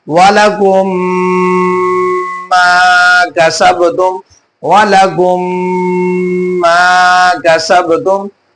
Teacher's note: मीम साकिन में बेटा क्या हो रहा है, यहाँ पे गुन्ना हो रहा है, क्योंकि मीम साकिन के बाद दूसरी मीम आ गई है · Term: इदगाम शफवी